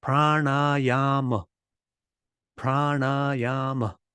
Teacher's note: it's got four syllables and the first three of them are long